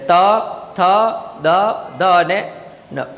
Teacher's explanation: જીભ આપણી છે દાંતને સ્પર્શ કરશે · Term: દંતવ્ય વ્યંજન